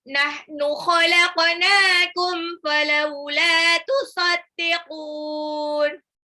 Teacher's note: qafnya pantul karena dia huruf qaf sukun ya, dibaca qalqalah